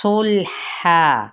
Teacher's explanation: لام کو ہلانا نہیں، اب ہا باریک ہے، الف مدہ ہے، اور جب ہم وقف کرتے ہیں تو یہی وقف ہمارا ہوگا وقف بالابدال، کیونکہ تنوین زبر کو ہم نے سنگل زبر کے ساتھ یعنی الف مدہ کے مطابق اس کو پڑھا۔